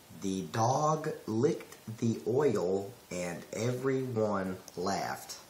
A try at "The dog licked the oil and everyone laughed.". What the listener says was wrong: That's choppy. That's not smooth.